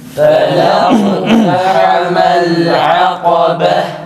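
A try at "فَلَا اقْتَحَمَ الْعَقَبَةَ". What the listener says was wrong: tekrar birinci kaf kalkalesi tam güzel çıksın.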